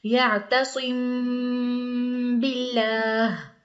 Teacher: میم ساکن کے بعد با آ گیا ہے تو یہاں اخفا ہوگا، یہاں اچھی طرح غنہ کریں گے، اخفا کریں گے، ناک میں آواز لے جائیں گے